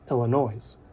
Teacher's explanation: I can say Illinois in an articulate way and still mispronounce it by including the S in my enunciation